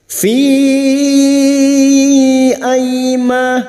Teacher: ai fathah bertemu ya sukun, huruf layin kita lunakkan. Aima fathah diikuti alif 2 harkat mad tabi'i.